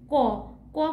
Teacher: মুখের সামনে হাত দিয়ে যদি উচ্চারণ করি ক বললে হাতে কিন্তু বাতাসের স্পর্শ পাবো না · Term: অল্পপ্রাণ বর্ণ